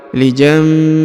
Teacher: Huruf hi-nya di ujung dipanjangkan 2 harokat ya. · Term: panjang 2 harokat